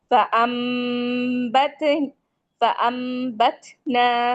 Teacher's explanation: नून के साउंड को मीम के साउंड में बदल देंगे। रिप्लेस कर देंगे। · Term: इकलाब का कायदा